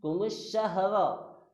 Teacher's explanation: Sebetulnya alif lam ada tapi tidak dibaca. Ini dikategorikan kalau dalam ilmu tajwid adalah alif lam syamsiyah.